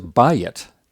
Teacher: It's got a accented first syllable and it's two syllables.